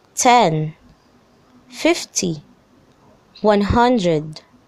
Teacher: if the number is a multiple of 10 the stress is placed on the first syllable